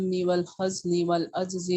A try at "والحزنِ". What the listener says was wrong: والحزنی ہے یہاں پر، زا ساکن نہیں ہے، زا پر حرکت ہے نا. والحزنی پڑھیں گے اس کو.